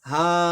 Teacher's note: এক আলিফ টেনে এক জবর ধরে পড়ে ফেলবো